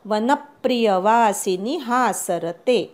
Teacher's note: वनप्रिय प वर आघात द्यायचा